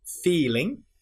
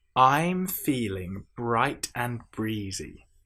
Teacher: at the end of ing we have n that nasal ng sound